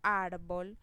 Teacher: Si yo digo árbol, la mayor fuerza en esa palabra la hago en la sílaba ar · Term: acento